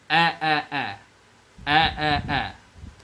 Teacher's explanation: Huruf hamzah. Makharijul hurufnya dikeluarkan dari tenggorokan bawah. Baris fathah atau baris atas dibaca a.